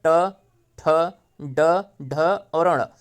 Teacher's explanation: जो ट वर्ग के व्यंजन हैं इन्हीं को जो है मूर्धन्य व्यंजन कहा जाता है। इसमें ट, ठ, ड, ढ और अण, ये 5 वर्ण जो है मूर्धन्य व्यंजन के अंतर्गत आते हैं।